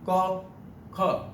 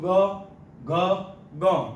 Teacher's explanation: સ્વરપેટીમાં ઓછું કંપન થશે તે અઘોષ બનશે, અને સ્વરપેટીમાં વધારે કંપન એટલે કે વધારે ધ્રુજારી થશે એ બનશે ઘોષ